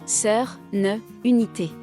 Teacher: French has central vowels, such as sœur, ne, unité. which exist neither in English nor other Romance languages